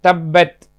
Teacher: ப இரண்டாவது எழுத்து. இரு உதடுகளின் உட்பகுதியில் ப உண்டாகும்.